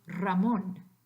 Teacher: when that same letter R, as I said, occurs at the beginning of a breath group, al principio de un grupo articulatorio, then it's actually the rolled version, the vibrante múltiple R. So in the word Ramón, even though there's only one R, if we assume that's the beginning of a breath group, usually the beginning of a sentence, let's say for ease, it would be Ramón.